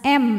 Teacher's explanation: mim sukun kita bunyikan dengan jelas m dan tidak ditahan